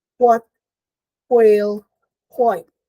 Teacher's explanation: It's unaspirated. It's labial, meaning lips, velar, because the back of the tongue approaches the velum. And it is a glide.